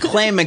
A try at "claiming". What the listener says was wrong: Clamming. You said clam. That's the underwater version. You said clamming.